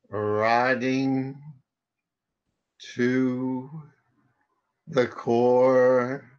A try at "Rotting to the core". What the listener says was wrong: I have a suggestion. Can you say it a little bit faster? Rotting to the core.